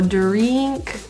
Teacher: The I's in drink and fish are a lower pronunciation.